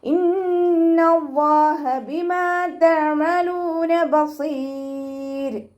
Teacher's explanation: അപ്പോൾ റോക്ക് സുക്കൂന്, അതിൻ്റെ മുന്നേ സുക്കൂന്, അതിൻ്റെ മുന്നേ കെസ്ര, മുന്നേ അക്ഷരത്തിന് കെസ്ര വന്നാലും നമ്മൾ റോയെ ലൈറ്റ് ആക്കിയിട്ടാണ് വഖഫ് ചെയ്യുക